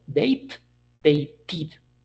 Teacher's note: because the T, the T is the last sound we have, we are going to pronounce the ed ending like id.